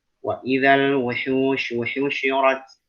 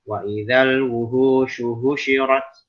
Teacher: H yang di wastul halqi di tengah tenggorokan.